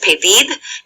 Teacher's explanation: notice how the stress is on that last syllable because it ends in a d